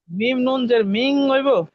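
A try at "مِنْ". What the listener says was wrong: মিন, এটা গুণাটা ভাই নাকের ভিতর হবে, মিন মিন গুণা। যদি আপনি মিং কন মিং, তাহলে এটা ইকফা গুণা হয়ে যাবে, এটা এরকম না, নাকের ভিতর মিন, নাকের ভিতর মিন, হ্যাঁ মিম নুন জের মিন, বলেন মিন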